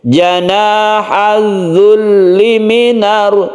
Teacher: zulli tasydidkan dahulu lamnya, kemudian lamnya ini pendek.